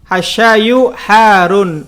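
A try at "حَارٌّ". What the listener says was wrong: sebetulnya har tuh rohnya ada tasdidnya ya. Jadi bukan Harun bukan Harun. Ada r-nya karena itu rohnya bertasdid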